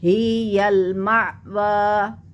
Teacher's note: تو حمزہ کے اوپر جھٹکا آتا ہے